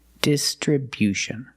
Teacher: Distribution with a stress on the first and third syllable